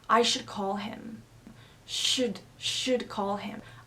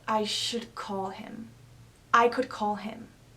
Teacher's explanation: A note about the pronunciation of modal verbs. We often pronounce these words really quickly, almost without a vowel.